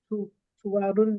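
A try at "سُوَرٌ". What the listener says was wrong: सुवरुण, सुवरुण। वारुण नहीं बोलना, यहाँ पे अलिफ नहीं है, सुवरुण। जब अलिफ है ही नहीं तो अलिफ क्यों पढ़ रही हैं आप? सुवा क्यों कह रही हैं? सुवरुण, सुवरुण। इसको सुवरुण बोलना है, सुअर नहीं बोलते ना। सुवरुण।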